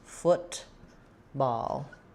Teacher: you pronounce it with first syllable stress. Letters O-O say So watch out, you don't want football, not an oo sound like food, but the sound like could and should.